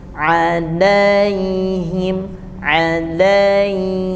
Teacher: fathah ke Ya Sukun itu namanya Lin jadi mengalir